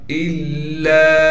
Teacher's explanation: حمزہ لام زیر ال، پھر لام پر زبر ہے اور لام کے بعد الف مدہ ہے، تو لہذا لام الف زبر لا، الا لام کو کھینچیں گے اس لیے کہ الف مدہ ہے لام کے بعد